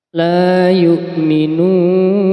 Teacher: mad tabi'i ini ketika dibaca waqaf maka harus dibaca mad arud lis sukun. Panjangnya adalah 6 harokat.